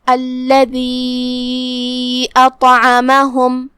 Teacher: مد جائز منفصل کا معنی ہے کہ حرف المد پہلے کلمہ کے آخرے میں ہو اور اس کی وجہ جو کہ حمزہ ہے وہ دوسرے کلمہ کی شروعات میں آئے۔ ہم اپنی آواز مد جائز منفصل میں 2 سے 4 مد کے برابر لمبی کریں گے۔ الذی اطعمہم، کلمت اطعمہم شروعات میں حمزہ قطع ہے، ہم اسے ظاہر کریں گے۔